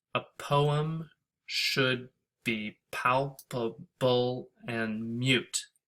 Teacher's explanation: One unstressed syllable followed by one stressed syllable. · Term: iambic pentameter